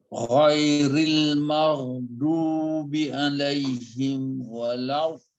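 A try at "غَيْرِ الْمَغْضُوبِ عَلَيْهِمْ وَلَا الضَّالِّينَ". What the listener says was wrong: Itu dia macam belum kembang betul-betul lagi lam tu. Lidah tu belum dia terbuka lagi. Dia sikit lagi nak buka sayapnya kiri kanan tu.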